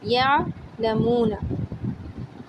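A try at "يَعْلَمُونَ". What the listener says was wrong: جھٹکا نہیں دینا اس میں ہمیں،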